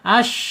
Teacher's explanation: syin secara makhraj ada di alisan ya yaitu tengah lidah ya atau tengah-tengah lidah terangkat